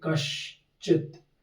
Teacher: पहला वर्ण वर्ग का तो इसमें अब देखो च वर्ग है च कौन सा वर्ण है तालव्य वर्ण है